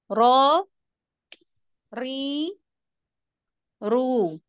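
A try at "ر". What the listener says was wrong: Naikkan lagi untuk tafkhimnya. Ro. Pangkal ya. Pangkal lidah, Ukhti.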